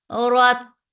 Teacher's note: Ra is heavy for fatha upon jaws.